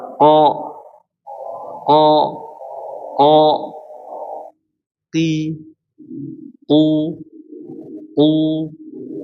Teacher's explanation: Jadi pangkal lidah atas maksudnya atas adalah yang paling dalam. Yaitu menempel dengan langit-langit yang lunak atau langit-langit yang daging. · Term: huruf qof